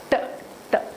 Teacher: So your tip of the tongue is touching the alveolar ridge and obstructing the air flow. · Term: alveolar sounds